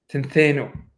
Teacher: an unstressed O, like unstressed omega, becomes an E. So it became tentheno.